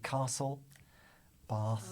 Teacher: I pronounce words spelled with an a-, often as ar-